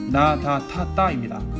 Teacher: 혀끝을 입천장에 갖다 댄 소리예요